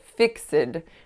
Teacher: I snuck an extra schwa sound in there